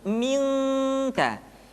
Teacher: Min salsalin, ketemu kaf maka dominan kepada huruf eng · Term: ikhfa